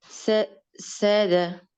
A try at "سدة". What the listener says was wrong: No, not sada. This is, sadda. Sadda.